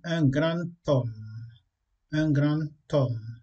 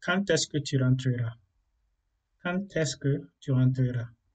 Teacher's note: Donc, lorsqu'on a un mot qui se termine par D, et après ça, il y a un mot qui commence par une voyelle ou par un H muet, lorsqu'on veut faire la liaison, on ne prononce pas D mais T.